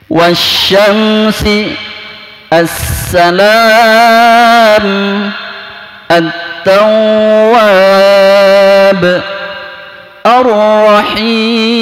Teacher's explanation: Karena kedepannya juga ada huruf yang pakai tasdid, ya, maka alif lamnya itu seolah-olah dihilangkan, tidak dibaca. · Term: alif lam samsiah